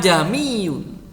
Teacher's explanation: membaca tashil yang benar itu adalah, kalau menurut yang saya pahami, itu adalah samar-samar antara hamzah dengan alif